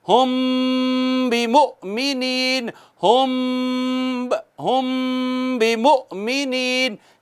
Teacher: میم ساکن کے بعد با ہے تو کیا ہوتا ہے؟ اخفاء شفوی ہوتا ہے. ایک الف کے برابر آواز چھپاتے ہیں